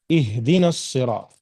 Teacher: اس کو ہا نہیں پڑھیں گے آپ، ٹھیک ہے، کیونکہ اس کے نکلنے کا مقام الگ جگہ ہے، بلکہ ہا جو ہے بالکل حلق کے نچلے حصے سے ادا ہوتا ہے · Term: چھوٹی ہا